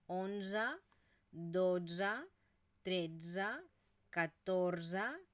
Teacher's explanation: y luego también fijaros esta de final que ya sabéis que es una vocal neutra y que por lo tanto no la pronunciamos como una e sino que es esta mezcla entre una e y una a